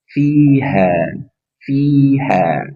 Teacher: Fa, udara atau nafas mengalir. Ha dari pangkal tenggorokan. Pastikan dari pangkal ha.